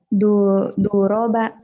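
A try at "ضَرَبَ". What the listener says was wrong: Do, jangan ada du. Kalau du yang ini domah, ini kan patah semua. Ayo hati-hati.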